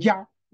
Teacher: 이때 이는 짧게 나는 이예요. 평소에 이하고 달라요. 평소에 이는 길게 나죠.